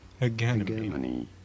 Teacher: This is said as hegemony with a hard G and an emphasis on the second syllable.